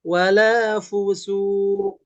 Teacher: pas ketika berhenti, ini jadi mantul ke suara O